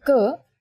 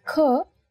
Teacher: when you say ker there is no forceful expulsion of air but when you say cur you will feel yourself expelling the air from your mouth